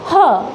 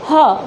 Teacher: जब हम ह बोलते हैं तो हवा है जो एकदम से माउथ से बाहर आती है, तब ये यूबुला है जो ऊपर उठ जाता है, और साउंड जो बाहर आती है जैसे कि ह, ये साउंड हमारी है यूबुला के थ्रू बनती है।